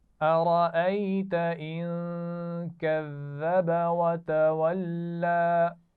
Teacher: कज़्ज़ब में ज़ाल के मखरज का ख्याल रखना है, सीटी नहीं होनी चाहिए।